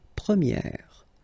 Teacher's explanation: So it's open, this eh sound.